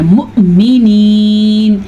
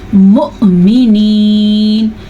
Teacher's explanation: جب واو کے اوپر حمزہ آ جائے اور حمزہ کے اوپر ساکن آ جائے تو ہم نے اس حمزہ کو جھٹکے کے ساتھ ادا کرنا ہے. بعض لوگ اس کو پڑھتے ہیں مومنین, انہوں نے تو واو مدہ بنا دیا, جبکہ اللہ نے جو ہمارے پاس بھیجا ہے یہ لفظ ہے مؤمنین, تو یہ جھٹکے کے ساتھ ادا کیا جائے گا.